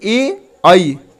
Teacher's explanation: कंठ प्लस तालु, मतलब दोनों से उच्चारण होता है, उसको बोलते हैं कंठ तालव्य।